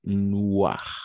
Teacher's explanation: la combinación de vocales O e I siempre va a ser wa para nosotros